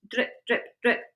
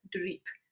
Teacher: I think it's the E sound of it, the longer vowel sound, rather than just drip